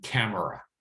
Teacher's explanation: For me, the primary goal is to help improve their listening skills so that they'll recognize that when someone says camera, they really mean camera, but they have reduced that middle syllable